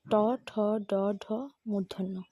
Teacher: এই বর্ণগুলো উচ্চারণকালে জিহ্বা মূর্ধার দিকে আকৃষ্ট হয়, তাই এদেরকে মূর্ধন্য বর্ণ বলা হয়।